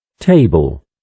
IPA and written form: ˈteɪbl (Table)